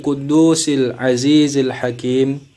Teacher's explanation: Hakim di sini mad tabi'i, tapi karena berada di akhir ayat atau akhir kalimat maka menjadi mad arid lis sukun. Maka harus dipanjangkan 2 sampai 6 harokat. Jadi bisa 2, 4, 6 sampai 6 harokat.